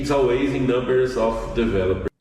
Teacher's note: ao invés dele entonar o always no all, ele entonou no ways. Ele falou always.